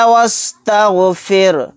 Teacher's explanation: اس رائے ساکنہ کو باریک پڑھیں گے کیونکہ رائے ساکنہ سے پہلے زیر ہے۔